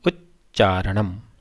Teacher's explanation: इसी प्रकार उत धन चारणम, तकार है, आगे चकार है, इसलिए त का च